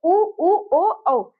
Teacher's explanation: उ ओ औ ऐसे ये हमारे मुख कैसे होते हैं? गोलाकार आकृति में बन जाते हैं। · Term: वृत्त मुखी स्वर